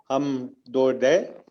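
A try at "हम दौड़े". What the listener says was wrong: Dode, very good.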